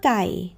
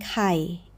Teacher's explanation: To the ear, they're near twins, but the very start splits them. ไก่ chicken opens with a hard sound made right at the back of your mouth, like the G at the start of go, with no breath after it. ไข่ egg opens more like the key in kite, with a soft little puff of air right behind it.